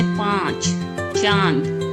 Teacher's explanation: जैसे मंथन, कंधा, तो यहाँ पर हम अंग की जो बिंदी है ये हम नाक से उच्चारण करते हैं। अनुनासिक, इसका उच्चारण हम या इसकी आवाज गले और नाक से मिलकर के बनती है या निकलती है, जैसे पांच, चांद।